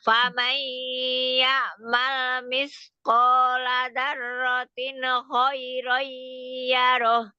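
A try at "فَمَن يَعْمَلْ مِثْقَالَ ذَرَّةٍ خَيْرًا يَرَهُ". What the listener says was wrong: Tapi jangan tin diselesaikan. Tin khoi gitu.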